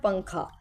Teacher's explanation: اب اس میں جو ہے دیکھیں، جیسے ہم اردو میں بولتے ہیں نا پنکھا، اب یہ اصل میں لکھا تو پن کھا جاتا ہے، لیکن آپ دیکھیں جب آپ اس کو پنکھا پڑھتے ہیں تو یہ پنگ آواز جو ہے وہ ناک میں چھپتی ہے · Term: اخفاء